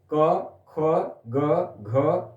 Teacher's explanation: सारे जो है उच्चारण कहां से हो रहे हैं कंठ से